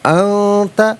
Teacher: انت میں نون ساکن کے بعد تا ہے، حرف اخفا ہے